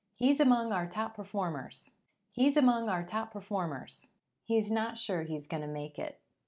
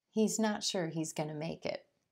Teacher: also notice how going to becomes gonna